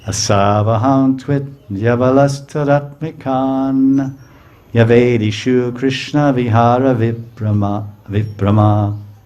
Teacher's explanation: It ends with ka, but the ka goes kan, because the first letter of the fourth word is N, and then Y. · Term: sandhi